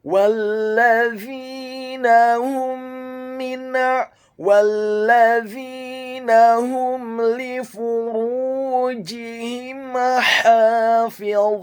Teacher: Huruf wa-nya dibaca tafkhim, tebal dhammah 2 harokat karena setelahnya ada huruf waw sukun, dan membaca huruf dha yang tafkhim dan dhammah, posisi bibir bawah kita agak tertutup dan posisi lidah kita di langit-langit atas